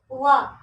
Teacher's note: दंत प्लस ओष्ठ से बोला जाता है।